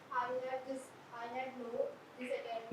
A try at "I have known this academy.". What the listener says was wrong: नो नहीं, I have नॉन. I have नोन.